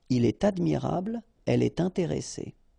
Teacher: in all these cases, you should make the liaison, and in that case, it's with T.